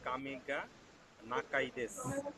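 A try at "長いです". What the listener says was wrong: নাগাই দেশ। নাকা না, নাগাই দেশ, দেখেন ওই যে উপরে আছে।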